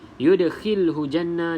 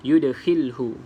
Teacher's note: da salah satu daripada huruf qalqalah, maka dilantunkan sedikit sahaja. Qalqalah sughra.